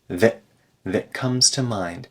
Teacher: the T in that turns into a glottal stop